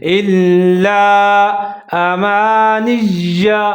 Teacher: لام کے اوپر تشدید ہے اور لام کو مضبوطی کے ساتھ پڑھیں گے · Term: لام مشدد